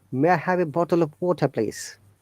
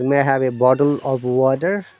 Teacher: This T becomes D in bottle and water.